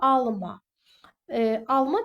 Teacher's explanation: inkar eləyəndə artıq bu fel kimi işlənir və vurğu birinci hecanın üzərinə düşür